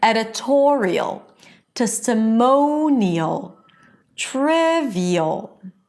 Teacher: notice that in all of these words, the stress is on the one syllable before the suffix